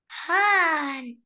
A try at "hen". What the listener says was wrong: هان ولا هن؟ هن هن هن هن، عشان الايه بنطقها ايه؟ هن. انت قلتي هان، هان غلط، هي اسمها هن